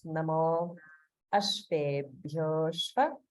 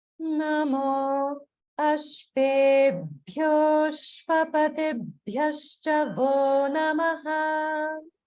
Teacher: notice the gap after namo because it's dirgha followed by another word beginning with a vowel. So it's namo ashvebhyo shva.